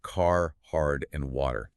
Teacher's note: you hear the hard, curled tongue on words like car, hard, and water. So mechanically, producing that rhotic R requires you to either curl the tip of your tongue backward toward the roof of your mouth or bunch the back of your tongue up near your molars.